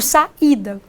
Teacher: Vejam bem, aqui eu tenho 3 sílabas, a segunda é a tônica, saída, eu não pronuncio saída nem saidá, eu pronuncio saída, com toda demora, né? Com toda valorização desta vogal I. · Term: hiato